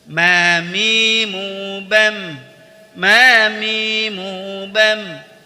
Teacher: huruf mim dikeluarkan dari dua bibir yaitu diucapkan dengan merapatkan kedua bibir